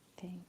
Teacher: So our tongue is touching back of teeth. That means it is unvoiced or voiceless sounds.